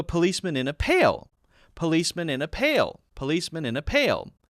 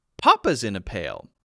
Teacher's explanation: I'll stress the interesting thing that the policeman is in which is a pale